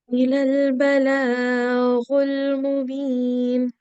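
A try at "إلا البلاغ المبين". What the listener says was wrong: So yeah, I think first when you were reciting, you pronounced the sound for more than 2 seconds. So make sure you don't do that. For the stroke, short strokes, only for 1 second you have to pronounce them, okay?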